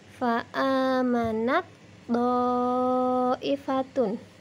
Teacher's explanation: Tak sukun bertemu dengan huruf to, maka cara membacanya taknya hilang langsung ke suara huruf to yang ditasydid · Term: idgham mutajanisain